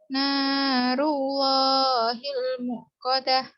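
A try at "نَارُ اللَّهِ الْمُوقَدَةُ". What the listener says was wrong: Panjang panjang oleh wawu. Muqadah.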